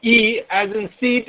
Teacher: E as in seat is a front close unrounded vowel